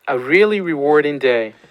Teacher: But this one is definitely a low boundary tone. He's going down to the end or the lower end of his pitch range.